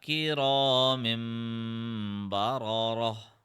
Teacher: you have to apply ghunna as well on the 2 seconds of pressing on the small meme. So it will be kira mim like that.